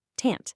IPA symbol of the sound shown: ə